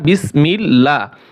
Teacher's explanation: এখানে আল্লাহর লামের আগে যেহেতু জের আসছে এখন এই যে আল্লাহর লাম এটা পাতলা হবে কি হবে তাহলে বিসমিল্লাহ লা হবে বিসমিল্লাহির আবার র মোটা হবে